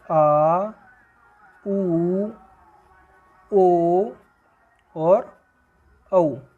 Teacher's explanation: बोलते समय जबान का पिछला हिस्सा ऊपर की ओर उठता है। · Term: पश्च स्वर